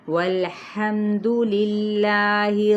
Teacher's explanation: والحمد، لام کو ہلائیں گے نہیں، میم پہ کیا ہے؟ اظہار شفوی ہے، اور دال کی پیش کو نہیں لمبا کریں گے